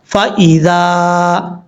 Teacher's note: ذال کو بغیر سیٹی کے ساتھ پڑھا جائے گا. اس کا مخرج ہے زبان کا سیدھا اوپر والے دانتوں کے اندرونی کنارے سے لگے تو ذال پڑھا جاتا ہے.